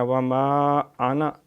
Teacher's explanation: مد ہے، حرف مدہ کے بعد حمزہ آ گیا، وما انا، یہ انا الف نہیں پڑھا جاتا